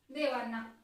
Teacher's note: जो अनुस्वार आहे त्याचा उच्चार कसा होतोय तर अस्पष्ट आणि ओझरता होतोय, म्हणून याला काय म्हणतात तर अनुनासिक असे म्हणतात.